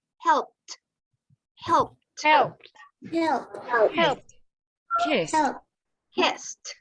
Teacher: So the ed at the end, it's pronounced like you have a t.